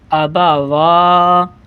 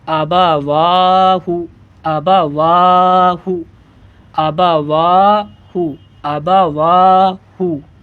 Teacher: واو کو ایک الف کے برابر کھینچیں گے جیسے الف کو کھینچا جاتا ہے الف مدہ میں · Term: کھڑا زبر